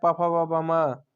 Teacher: ये सब बिना ओठ सटाए आप नहीं बोल सकते हैं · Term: प वर्ग ओष्ठ से